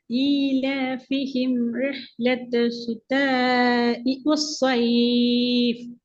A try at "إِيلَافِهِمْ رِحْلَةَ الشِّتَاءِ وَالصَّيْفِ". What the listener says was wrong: இப்ப நீட்டலையே, ஏன் நீட்டத்தை குறைக்கிறீங்க? إيلافهم رحلة الشتاء நீட்டணும். ஆனா ஷீன்ல சத்திக்குது, அந்த சத்து உச்சரிக்கப்பட இல்லை.